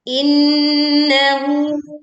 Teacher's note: dengungkan nun bertasydid dengan sempurna